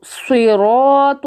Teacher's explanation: صراط، تو بھی موٹا ہے، رو بھی موٹا ہے، صاد بھی موٹا ہے لیکن وہ اتنا موٹا نہیں ہو پا رہا کیونکہ اس کے نیچے زیر ہے